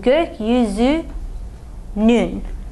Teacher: we're going to need to add the buffer n sound so that we buffer this ü from the ü in our ending